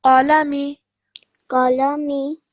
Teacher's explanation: make sure the qaf is a nice and thick and heavy sounding letter. So really round your mouth and from the middle of your throat pronounce that.